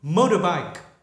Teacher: Người Mỹ thì nghiêng về âm d hơn.